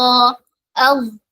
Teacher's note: ടങ്ങ് പുറപ്പ് നിസാൻ എവിടെ തട്ടിക്കണം മുകളിലുള്ള രണ്ട് പല്ലിന്റെ താഴ്ഭാഗത്ത് അഥവാ നാവിന്റെ നാവിന്റെ അറ്റം പുറത്തേക്ക് വരണം ഓക്കേ അവിടെയാണ് ടച്ച് ചെയ്യേണ്ടത് നാവിന്റെ ബാക്ക് സൈഡ് ഉയർത്തിയിട്ടാണ് പറയുക